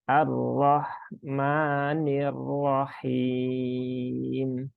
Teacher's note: roknya jelas, haknya jelas, mimnya cukup 2 harokat. Jangan panjang-panjang. Jangan lebih dari dua, karena banyak juga yang praktek Ar-Rahmanir Rahim.